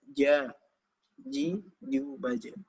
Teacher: jim menyentuh langit-langit dan apa yang perlu diwaspadai dari jim adalah keluarnya udara